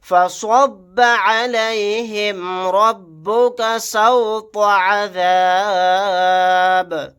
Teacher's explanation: سواد کو موٹا یعنی پر پڑھیں گے، را کو بھی موٹا پڑھیں گے